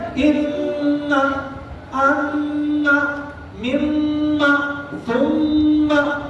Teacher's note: 2 حرکت کے برابر کھینچنا ہے غنہ کے ساتھ